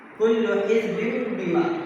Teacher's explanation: Jadi bertemu dengan huruf ba tadi itu menjadi bim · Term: iqlaq